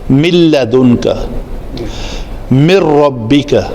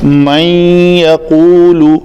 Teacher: نون مکمل طور پر غائب ہو گیا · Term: ادغام تام